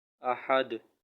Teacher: دال پہ ہم وقف کریں گے، یہ ہو جائے گا ساکن، اور ساکن ہونے کی صورت میں یہ قلقلہ ہوگا